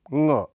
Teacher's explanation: ङ, इसका उच्चारण क आदि वर्णों की तुलना में काफी पीछे है। यह अल्प प्राण घोष कोमल तालव्य नासिक व्यंजन ध्वनि है